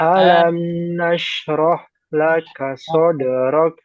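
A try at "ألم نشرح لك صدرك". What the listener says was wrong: Ya, hanya masih kurang alir. Roh, roh, alirkan aja. Jangan sampai habis. Jadi kalau habis langsung ke la. Roh, la, roh, la. Dan roh, la, nah, itu ada jeda. Jadi aliran langsung ke la. Alam nashrah laka sadrak.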